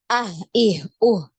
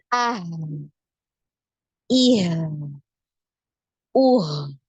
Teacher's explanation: Ketika sukun maka dialirkan suaranya, ya, agak panjang, ya. Jadi tidak kita menyebutkan hanya ah, ih, nah, atau ah, ih, tidak seperti itu, ya.